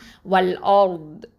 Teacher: நாவின் வந்து side edges இருக்குது பார்த்தீங்களா, அது வந்து மேல் கடவாய்ப்பற்கள் அந்த இடத்துல வந்து டச் பண்ணி சொல்லணும் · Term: ஹாஃபத்துல் லிசான்